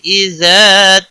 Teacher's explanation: اذا الف مدہ ہے، 1 الف کے برابر کھینچ کر پڑھیں گے۔